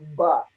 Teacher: Contohnya ya, kita sebut dengan ba. Ya, maka power yang keluar itu ujungnya adalah bibir, dan titik itulah tempat ba itu keluar atau suara itu keluar, satu suara yang berbunyi ba.